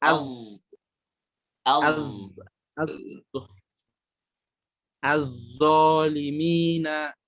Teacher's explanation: Lidah ujung az- bertemu dengan gigi seri atas.